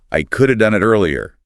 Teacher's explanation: Could have shrinks to coulda.